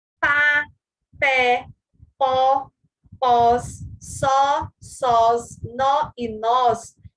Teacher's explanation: É um monossílabo cuja intensidade se equipara à de uma sílaba tônica, pois é pronunciado fortemente. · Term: monossílabo tônico